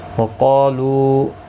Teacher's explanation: قاف حروف مستعلیہ ہے، پر پڑھا جائے گا. اس کے ساتھ الف بھی آیا ہے، یہ بھی پر پڑھا جائے گا.